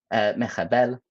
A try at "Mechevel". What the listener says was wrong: You said mechabel.